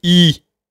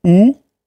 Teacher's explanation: Le ou c'est la même endroit mais c'est au fond